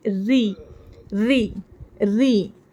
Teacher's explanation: हम बारीक इस तरह से पढ़ेंगे री री री ठीक है जुबान की नोक र को बारीक पढ़ते वक्त मसूड़ों के ऊपर के मसूड़ों के थोड़ा नीचे लगाने से र बारीक हो जाता · را کے نیچے جب زیر آ جاتی ہے نا تو را کو ہم باریک آواز میں پڑھیں گے. زبان کی نوک نیچے اوپر کے دانتوں کے مسوڑوں کے نیچے لگیں گی.